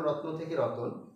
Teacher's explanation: যুক্ত ব্যঞ্জনধ্বনির মাঝে স্বরধ্বনি চলে আসে। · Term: মধ্য স্বরাগমের